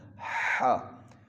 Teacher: اس کو باریک آواز میں گلے سے آواز کو رگڑ کر نکالیں گے، حلق سے جو زبان کی جو ہے نا جڑ بنتی ہے اوپر کی طرف، جڑ اوپر کوا لٹکا ہوتا ہے، وہاں سے اس کو ادا کرنا ہے، ہا۔